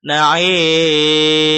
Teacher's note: mad itu al-jauf, rongga mulut. Jangan sampai masuk ke rongga hidung. Jangan na'im.